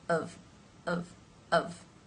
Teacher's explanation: the bottom lip moves up of to the teeth of to make that v sound